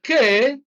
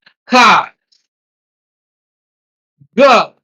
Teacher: you use the back of your tongue and the soft palate